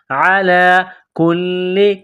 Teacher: لام گڑا زبر لا، ایک الف کے لمٹ میں کھینچنا ہے لام کو